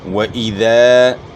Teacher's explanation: زیر کو معروف پڑھنا ہے، مجہول نہیں پڑھنا